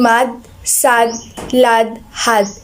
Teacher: low front lax vowel in mad, sad, lad, had